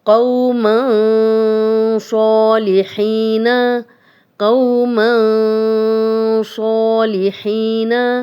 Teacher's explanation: قوما صالحین، قوما صالحین، تنوین، تنوین کے بعد صاد آ گیا، اکفا کے رول میں سے ہے اور اس کا نام ہے اکفا اور نون کی آواز، تنوین کی آواز کو تھوڑا چھپا کر ہم غنہ کریں